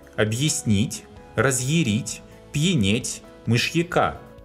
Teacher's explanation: Япония, язык, январь, явились. Unstressed ya that follows such letters as hard sign and soft sign sounds as yi too.